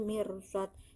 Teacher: kolkola kubro karena huruf kolkola dal diwakof, cara membacanya dipantulkan lebih tebal